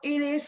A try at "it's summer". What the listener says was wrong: You don't pronounce it is.